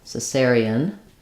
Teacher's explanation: But the pronunciation is Caesarean with stressing on the second syllable cer. So it sounds like Caesarean.